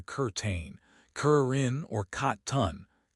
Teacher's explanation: The trick is to abruptly close your vocal cords like the sound you make when you say uhoh. That stop in the middle of uh is a glottle stop. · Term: glottal stop